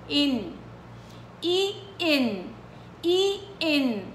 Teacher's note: والنون لازم تكون واضحه وتعطيها الغنه الطبيعيه تبعتها اللي هي الناقصه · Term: اظهار نون